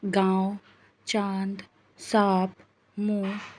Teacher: हैं इनका प्रयोग चंद्र बिंदु के रूप में किया जाता है इसे बोलते समय वायु नाक और मुंह दोनों से बाहर निकलती है ये व्यंजनों के साथ स्वर की मात्रा के रूप में आता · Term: अनुनासिक